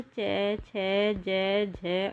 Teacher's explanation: और नेक्स्ट है हमारा तालव्य में जिन व्यंजन ध्वनियों का उच्चारण तालु स्थान से होता है उन्हें तालव्य कहते हैं। इनके उच्चारण में जीभ का अगला भाग तालु को छूता है